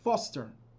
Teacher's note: The stress is on the first syllable of the word, foster.